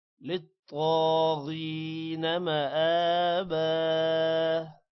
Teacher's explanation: تو پر کھڑی زبر ہے لمبا کریں گے. موٹا بھی کریں گے تو کو. · غین کو بھی موٹا کریں گے. مآبا حمزہ پر کھڑی زبر ہے لمبا کریں گے